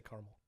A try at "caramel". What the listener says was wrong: Caramel. So you didn't even pronounce that second A. caramel, but it's spelled caramel.